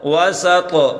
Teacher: طوا پر قلقلہ کریں اور طوا کو موٹا کر کے پڑھیں